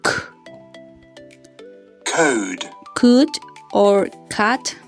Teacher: Velar. The back of the tongue touches the soft palate.